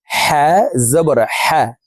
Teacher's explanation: হার মাখরাজ হলকের মধ্যখান থেকে হবে।